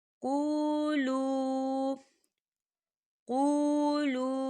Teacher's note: یہاں پر واو مدہ ہو رہا ہے، واو ساکن ہے اور واو ساکن سے پہلے پیش آ رہا ہے، اور اس پہ چھوٹی سی مد بھی آپ کو نظر آ رہی ہوگی، تو ہم اسے 4 حرکت کی برابر کھینچ کے پڑھیں گے